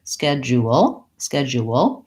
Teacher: I almost have a hidden W in between the U